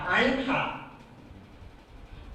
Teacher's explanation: اب یہ ایک حرف یہ ہے عین اور دوسرا حرف ہے ہا، عین ہا. یہ دونوں حرف ایک جگہ سے نکلتا ہے عین ہا. درمیان حلق سے یہ نکلتا ہے، یہاں سے دیکھیے یہ والی جگہ سے یہ عین ہا نکلتا ہے، عین ہا.